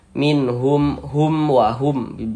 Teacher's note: Nah, di sininya nih huruf waw, bukan huruf ba, bukan huruf mim, maka berarti hukumnya adalah izhar syafawi. Karena dia izhar maka dibaca jelas, tidak berdengung, jadi baca pendek saja.